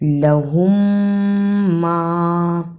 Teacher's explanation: میم ساکن کے بعد میم آیا ہے جسے ادغام شفوی کہتے ہیں، یعنی ان دو میم کو اکٹھا ملا کر پڑھنا ہے. لہم ما، اور اکٹھا ملا کر پڑھنے کی وجہ یہ بھی ہے کہ دوسری میم پر شد ہے، اس لیے میم کی آواز درمیان میں ٹوٹنی نہیں چاہیے.